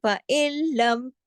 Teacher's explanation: نون ساکن ہے، اس کے بعد ادغام ہو رہا ہے لام کے ساتھ، لیکن کوئی غنہ نہیں ہو رہا ، لام اور را 2 حرف ایسے ہیں کہ ادغام ہوتا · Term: ادغام تام بلا غنہ